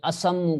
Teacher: میم کو میم میں ملا دیا، میم کی حرکت کو صاد کو، پہلے میم والی حرکت کو صاد کو دے دیا، اور دوسری میم کی حرکت کو جو ہے پیش ہی رکھا، تو اسممو سے بنا اسمو، ٹھیک ہے۔ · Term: ادغام